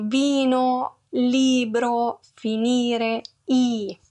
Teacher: La vocale I è più chiusa e acuta.